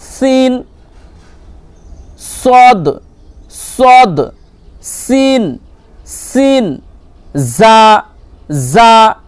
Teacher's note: জিভের আগা এবং সামনের উপর নিচের দুই দাঁতের আগার সাথে লাগিয়ে উচ্চারিত হয়।